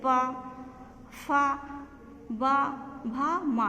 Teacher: ये जो लिप्स है हमारे होठ हैं वो मिल जाते हैं आपस में और फिर वहाँ जो प्राणवायु वहाँ रुकती है और फिर वहाँ रुकती है।